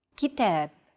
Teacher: are shortened to accommodate the rhythm of stressed syllables notice that the second syllable is stressed it's pronounced longer and louder while the first and final syllables are shortened